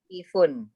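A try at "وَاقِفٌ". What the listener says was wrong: Nah, wanya panjang ya. Waqifun. waqifun.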